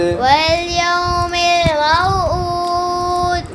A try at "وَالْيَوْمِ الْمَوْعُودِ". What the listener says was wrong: دال پر پھر کلکلا نہیں کیا. کلکلا نہیں نا آپ آخر میں کرتے.